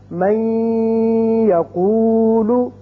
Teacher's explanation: ہم اس کو جب من کو یقولو کے ساتھ ملائیں گے تو ادغام کریں گے اور یہاں ایک الف کے برابر آواز ناک کے بانسے میں ٹھہرے گی